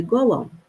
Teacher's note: Para indicar essa junção dos dois Os, acaba entrando esse som de U, que é suave